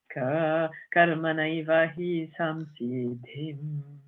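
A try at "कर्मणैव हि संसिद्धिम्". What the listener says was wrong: Too low.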